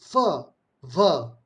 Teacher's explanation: labiodental where the teeth and the lip together blow out the air